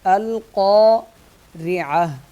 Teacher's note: القارعہ، حمزہ لام زبر لام سے حمزہ مل جائے گا اور قاف موٹا پڑھا جائے گا۔ القارعہ، را پتلا پڑھا جائے گا کیونکہ را کے نیچے زیر ہے۔ اگر زبر یا پیش ہو تو اس صورت میں را موٹی پڑھی جاتی ہے، اور وقف کی صورت میں یہ تا جو ہے ہا بن جائے گا۔